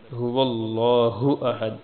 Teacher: هو اللہ لفظ اللہ کا لام یہ موٹا پڑ جائے گا کیونکہ اس سے پہلے لفظ پر زبر ہے